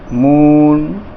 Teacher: हमने ऊ बोला तो ऊ को थोड़ा लंबा खींच दिया, दीर्घ में इसका हो गया।